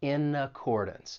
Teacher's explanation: We can link that consonant N in with the vowel sound in accordance.